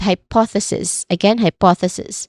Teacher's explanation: we start on the first syllable high, which has a clear I dip thong sound. Following that is the stress syllable po.